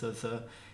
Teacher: A dental sound in English is the TH sound at the start of the word the. So the, it uses your teeth.